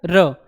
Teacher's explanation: जो र होता है इसको बोलने में जो हमारी जीभ होती है वो बेलन के प्रकार गोल होकर एकदम झटके से नीचे ऊपर होती है, आगे पीछे होती है, जो गिरती है। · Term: लुंठित वर्ण